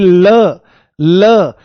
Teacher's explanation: जीभ के किनारे उठ से जाते हैं और उसके बराबर से हवा निकलती हुई महसूस होती है। तो इसमें आप लिख लो कि इसका उच्चारण करते समय, इसका उच्चारण करते समय, इसका उच्चारण करते समय वायु, वायु जीभ के पार्श्व भाग से, पार्श्व भाग से निकल जाती है, पार्श्व भाग से निकल जाती है, निकल जाती है। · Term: पार्श्विक व्यंजन